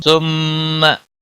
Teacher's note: सुम्मा मीम मुशद्दद पर गुन्ना होगा,